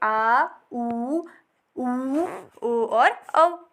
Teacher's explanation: जिन स्वरों के उच्चारण में जीभ का पीछे का स्वर भाग काम करेगा उसे बोलेंगे पश्च स्वर।